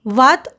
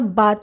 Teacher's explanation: ब का उच्चारण दोनों होठों के जोड़ने पर होता है